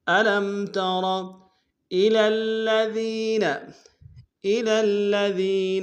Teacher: الی میں لام کو الذین کے لام کو سامنے لانا ہے، لام کے اوپر تشدید زور دیں گے. دال کو یا کے سامنے لائیں گے، یا مد ایک انداز میں کھینچیں گے.